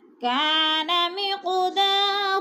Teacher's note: کا کو تھوڑا سا کھینچنا ہے، الف مدہ ہے، قاف پر قلقلہ کریں گے، ہلا کر پڑھیں گے کیونکہ قاف حروف قلقلہ میں سے ہے اور ساکن ہے ، اور دا کو تھوڑا سا کھینچنا ہے، الف مدہ ہے،